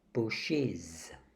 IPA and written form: bʊʃɪz (bushes)